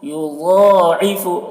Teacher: ضاد کو پر پڑھیں گے کیونکہ حروف مستعلیہ میں سے ہے، حروف مستعلیہ ساتھ ہے، خصہ ضغط قض جس کا مجموعہ ہے، تو ضاد حروف مستعلیہ میں سے ہے اس لیے ضاد کو پر پڑھیں گے۔